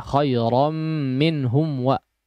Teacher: Di izharkan Ya ini sudah lewat pembahasannya betul-betul di izharkan jangan tidak jelas mimnya